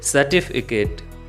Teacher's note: In this word, there are 4 syllables and stress will be on second syllable.